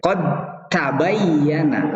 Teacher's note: Seakan-akan taknya, dalnya tidak ada dan taknya bersyiddah, bertasydid. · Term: idgham